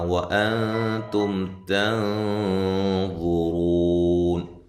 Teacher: نون ساکن کا اخفا ہے، تا باریک ہے، میم ساکنہ کا اظہار ہے۔ یہاں نون ساکن کا اخفا ہے موٹا۔